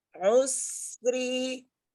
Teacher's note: Itu hurufnya sin ya. Jadi jangan ngangkat pangkal lidahnya sehingga jadi tebal